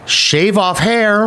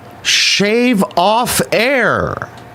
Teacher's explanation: In fact, she H-dropped a lot. Shave off hair was shave off air.